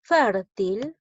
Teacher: Fértil lleva la mayor fuerza de voz en la sílaba fer. Es una palabra grave.